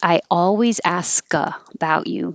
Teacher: you will hear the k because there's no e d and the k will connect to the a